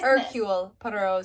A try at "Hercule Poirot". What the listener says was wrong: You don't pronounce the H.